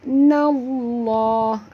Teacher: Nallah alif lam di sini alif lam syamsiah. Ya, masukkan bunyi nun baris atas terus ke dalam lam disertai dengan jud.